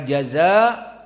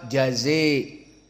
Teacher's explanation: al-imalah al-kubra yang mana imalah alkubra lafaz yang tadi maka jaza dibaca jaze